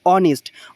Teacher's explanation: অনেস্ট অর্থাৎ এইচ এর উচ্চারণ হচ্ছে না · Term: সাইলেন্ট এইচ